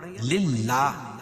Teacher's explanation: اللہ کے لام سے پہلے زیر ہے تو اللہ کا لام باریک پڑھا جائیں گے، للہ نہیں پڑھیں گے۔